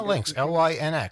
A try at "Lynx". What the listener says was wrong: No, Lynx, like Lynx. No, you said Linx. Lynx.